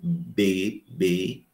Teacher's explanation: nessas consoantes bilabiais, o articulador ativo é o lábio inferior.